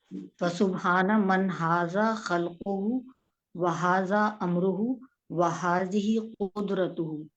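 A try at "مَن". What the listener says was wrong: ये मीन नहीं है मन है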